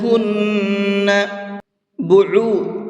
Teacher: عین کو حلق سے نکال کر کے پڑھیں گے